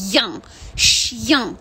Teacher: Це «й», який переходить в «я» і йде в нос.